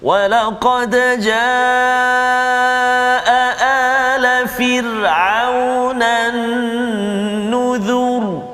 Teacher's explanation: Tebal bunyi ra tu sebab huruf zal tu baris depan. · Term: bunyi tebal